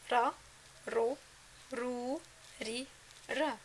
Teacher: So حرف الراء is similar to the Spanish R in Ronaldo. This sound is made by striking the upper gums using the top of the tip of the tongue.